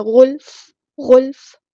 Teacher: غلف، غین ہمارا heavy letter ہے، پورا ادا کریں گے، اور فا کو ہم ساکن کر دیں گے وقف کرتے ہوئے، لیکن ہلانا نہیں ہے